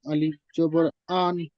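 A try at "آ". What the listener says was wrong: আলিফ জাবার আ, এটা তো আলিফ মাদ্দা, এক আলিফ টান দিয়ে বলতে হবে। আ,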